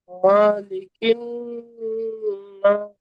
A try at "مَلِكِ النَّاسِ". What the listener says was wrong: মা টান হয়ে যাচ্ছে, মা টান হবে না। মালিকিন।